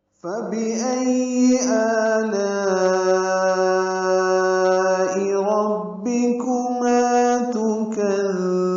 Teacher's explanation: حمزہ اقصی حلق سے ادا ہوگا ، حمزہ کو یا سے ملانا ہے، یا پر تشدید ہے، · یا کو معروف طریقے سے جلدی پڑھیں گے۔ فَبِأَيِّ آلَا میں آ میں مد بدل ہے، یہ 2 حرکات لمبا ہے